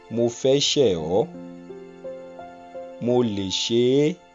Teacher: the pronoun in this case just repeats the vowel of the verb just before it